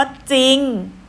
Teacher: คำว่าจริงออกเสียงแต่จอจาน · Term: คําควบกล้ําไม่แท้